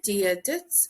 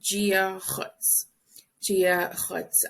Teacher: you really hear the D sound in Munster, Dia Dits. But in Connacht and Ulster, it's pronounced more like a G